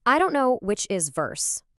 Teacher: Starting with that buzzy V vibration.